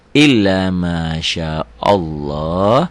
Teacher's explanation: Jadi lafad Allah itu berbunyi tebel, tafkhim, ya, taglid.